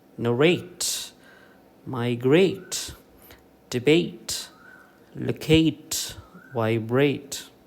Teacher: you give primary stress to the second syllable